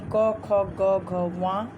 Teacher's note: तो क वर्ग यानी क, ख, ग, घ, व, इसका उच्चारण स्थान कंठ है